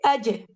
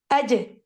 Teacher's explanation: جیسے اج, تو میں نے جیم کے لیے مڈل پارٹ آف دا ٹنگ کو ٹچ کرنا ہے تالو پہ، اور میں فوراً ہی اسے ہٹاؤں گی، اور وہ اتنا کوئک ریموول آف دا ٹنگ ہوگا فرام دا مخرج کہ آواز کو ایسا لگے گا جیسے ٹکرا کے واپس آئیے. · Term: قلقلہ